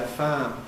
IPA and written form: faːm (farm)